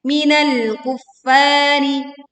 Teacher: tekan lam sukun dengan menahan sebagian suara di ujung lidah.